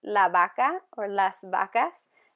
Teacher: the V sound is a little bit different in Spanish where it sounds like a B versus a V.